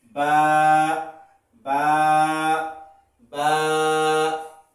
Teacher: দুই ঠোঁট থেকে উচ্চারণ হবে